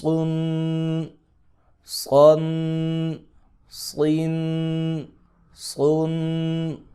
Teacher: سیٹی بھی اور موٹا بھی کرنا ہے